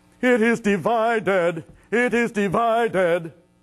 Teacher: you have a little crescendo in the first syllable a stress on the second and a diminuendo for the third